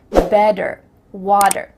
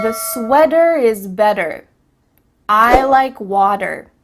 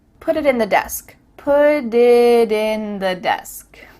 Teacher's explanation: In American English, a T that's between two vowel sounds, it doesn't always have to be a vowel, but between two vowel sounds is going to change to a D.